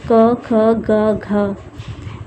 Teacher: कंठ और निचली जीभ के स्पर्श से बोले जाने वाले वर्ण जो होते हैं, कंठ और निचली जीभ के स्पर्श से जो बोले जाने वाले वर्ण होते हैं वो हैं अ, आ और क वर्ग।